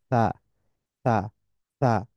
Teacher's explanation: We need to keep the tongue slightly outside the upper teeth and let air pass gently. আমাদের জিহ্বাটা একটু বাইরে রাখবো আমরা, উপরের দাঁতের সাথে টাচ লাগিয়ে একটু বাইরে রাখবো।